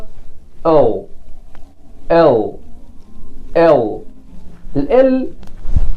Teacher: لسانك كده بيبقى ملفوف وبيلمس الالفيلور ريدج